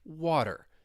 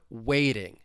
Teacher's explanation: when the T comes between two vowel sounds, you're going to hear me pronounce it as a flap T. It's going to sound like a soft D.